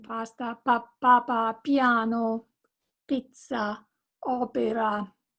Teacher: the vowel following the double consonant is a little longer and the vowel before is very short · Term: double consonants